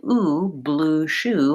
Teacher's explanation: in ooh blue shoe my lips are very tense and my tongue is tight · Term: the tense vowel ooh